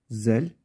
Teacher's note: dilin ucu üst ön dişlerin başından biraz dışarı çıkacak o şekilde okuyoruz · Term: Peltek